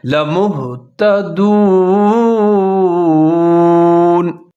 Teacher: یہاں پر میم پیش ہا موہ ملا کر پڑھیں اور ہا کو موٹا کر کے پڑھیں